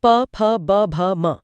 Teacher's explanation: और आखिर में प वर्ग उच्चारण स्थान ओष्ठ, प फ ब भ म। इसमें दोनों होंठ एक दूसरे को छूते हैं।